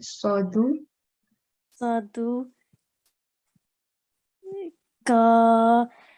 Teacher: because there is no shadda on dal, so we won't stress on dal. So we would just say sadu.